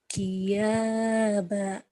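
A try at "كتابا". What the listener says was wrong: Kiyaba. Salah. Kiyaba mah. Salah. Ya, itu ya bukan ya. Titiknya di atas. Kitaba.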